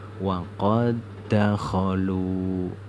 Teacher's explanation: Bacanya yang pertama itu dihilangkan, huruf dal yang sukun ini dihilangkan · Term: idgham mislain